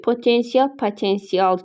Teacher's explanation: Yazılış deyiş arasında 2 fərqli məqam var. Bəli, o A'ya keçdi. İ, A'nın arasında Y samiti artırıldı. Səs düşümü yox, əksinə səs artımı müşahidə olunur.